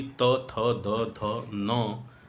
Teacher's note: जबकि त, थ, द, ध, न ध्वनियों का जब उच्चारण आप करते हैं तो उन ध्वनियों का उच्चारण स्थान आपके दंत भाग होते हैं, यानी आपकी जिह्वा जाकर के दांत से टकराती है